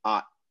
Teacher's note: the syllable final r becomes a glottal stop · The sort of like imitation Delta blues or British pronunciation gets rid of the H, and then the non-roticity gets rid of the final R and replaces it with a glottal stop. · thereof but people will say instead of heart they'll say ah it's just like a vowel plus glottal stop and that's the whole word